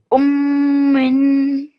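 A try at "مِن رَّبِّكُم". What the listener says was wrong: Not min. Mir Rabb.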